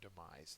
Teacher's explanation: the second syllable is accented it is a death